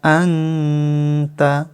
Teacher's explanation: নুন সাকিনের ইখফা বাংলায় অনুস্বারের মত